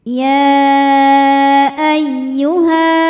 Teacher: tasydid ini dibaca dengan nabr. Kita naikkan intonasi suaranya.